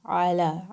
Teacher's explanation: Ain is again a throat letter. It's going to come from the middle of your throat.